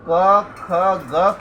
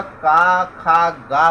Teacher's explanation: पंजाब के लोग क, ख, ग के बदले क्रमशः का, खा, गा बोलते हैं